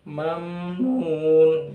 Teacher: huruf mimnya sukun itu ditahan sebentar saja, jangan sampai kelamaan. Mamnun ya, nun ini juga akhir ayat harus disukun, bisa 2 harokat, bisa juga 4, 5 atau 6 harokat. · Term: mim gunah sedikit